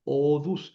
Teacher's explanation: Esta nt cae, desaparece ante la sigma. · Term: alargamiento por compensación